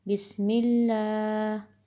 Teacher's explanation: اللہ سے پہلے زیر ہے تو اس کی آواز باریک